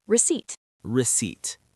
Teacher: the letter P in the word receipt is completely silent. We do not say the P. We just say receipt.